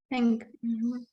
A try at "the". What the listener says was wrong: Is it think or the? Yeah, but listen to the sound. It's a strong. It's a voiced sound, so it comes from here, from your voice box. It's not a soft. It's not a soft lip sound like a. It's the. So it's the. The.